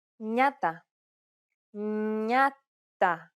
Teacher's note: With an opening diphthong, it sounds like an N plus Y sound, exactly like the Spanish ñe, or similar to the N in the word new